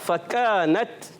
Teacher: کاف کی ادائیگی ہوتی ہے زبان کی جڑ اور تالو کا سخت حصہ